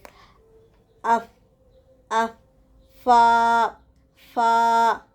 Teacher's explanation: اوپر کے سامنے والے 2 دانتوں کے کنارے کو بیچ کے ہونٹوں کی تری والے حصے کے ساتھ لگانے سے نکلتا ہے